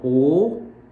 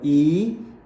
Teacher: É aí que entra a questão do arredondamento, que o Alexander Graham Bell fala, né? Então, o, eu arredondo. Quando eu falo i, eu estendo.